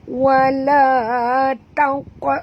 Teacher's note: Dan qaf ini apabila dia mati di tengah-tengah kalimah perempuan, kena lantunkan dia. Oleh kerana huruf qaf ini adalah huruf isti'la. Jadi maka kita kena lantunannya agak kuat bunyi dia.